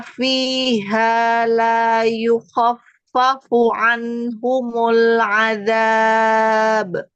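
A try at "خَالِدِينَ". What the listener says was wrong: Ho, buka, jangan pakai monyong. Ho, angkat aja pangkal lidahnya, buka rahangnya. Ho, pangkal lidahnya diangkat lagi.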